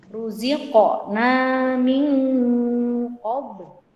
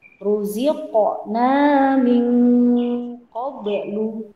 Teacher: Nah, itu qafnya dipantulkan, ba-nya dipantulkan. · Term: qalqalah